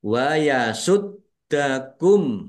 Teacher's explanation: dalnya dibaca double ada tasdidnya ditekan dan ditahan biar tampak doublenya